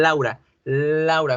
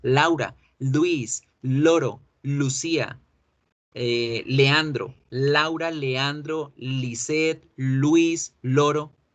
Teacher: fíjese cómo la lengua toca todos los dientes superiores